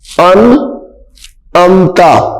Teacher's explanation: یہ نون ساکن ہے ان امتا، نون ساکن کے فوراً بعد حروف حلقی آ رہا ہے، نون ساکن کے بعد حروف حلقی میں سے آئین آ رہی ہے، تو یہاں پہ اظہار ہوگا، غنہ نہیں ہوگا